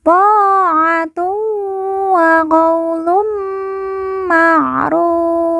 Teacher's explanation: Kemudian fa di ujung kita sukunkan atau kita matikan karena waqaf atau berhenti.